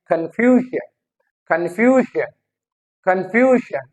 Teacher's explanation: फ्यू पे ज्यादा जो है वो स्ट्रेस आ रहा है हमारा